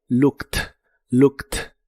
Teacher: En el pasado es looked igual la doble o se pronuncia como una u corta y explosiva y la e d del final se pronuncia como si fuera una t. Looked.